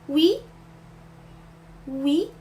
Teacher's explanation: les francophones souvent prononcent comme U en français, mais ici les deux sons doivent être bien séparés